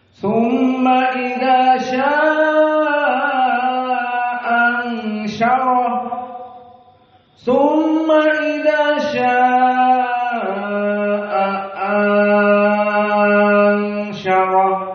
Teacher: setelah panjang mad a maka ada ikhfa ansyarah dan roh dalam keadaan mufakhamah. Maka di sini huruful mufakhamah hanya satu roh.